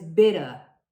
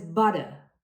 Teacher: usually with a letter T or two T's, which sound more like a D. In British English, this is not very common, and the T's are usually more clearly pronounced.